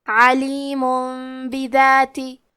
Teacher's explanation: با حروف القلب میں سے ہے، قلب کا معنی ہے بدل دینا، تو ہم تنوین کو ہلکی میم میں بدل کے اور غنہ کے ساتھ یہ حکم کو ادا کریں گے